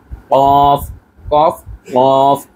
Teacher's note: গলার ভেতর থেকে চাপ দিয়ে বলতে হবে কফ